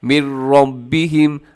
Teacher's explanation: یعنی نون کی آواز بالکل ختم، را موٹا پڑا جائے گا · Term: ادغام تام